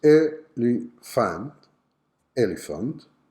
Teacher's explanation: word has two possible pronunciations one is a li fan elephant with the schwa sound on the last syllable